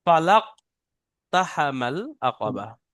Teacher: কফের উপরে সাকিন এসছে, তাই এখানে কফকে কলকলা করতে হবে। কফকে ডান দিকের অক্ষরের সাথে মিলিয়ে কলকলা করে পড়তে হবে।